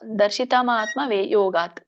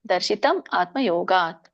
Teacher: ಅಲ್ಲಿ ಮಾ ಇದೆಯಲ್ಲ, ಅದನ್ನ ಮ ಹಿಂದಿನ ಪದಕ್ಕೆ ಹೋದಾಗ ಮ ವ್ಯಂಜನ ಆಗುತ್ತೆ, ಮುಂದಿನ ಪದಕ್ಕೆ ಆ ಆಗುತ್ತೆ. ದರ್ಶಿತಂ ಆತ್ಮ ಯೋಗಾತ್ ಆಗತ್ತೆ, ಮುಂದಿನ ಪದಕ್ಕೆ ಆ ಆಗತ್ತೆ.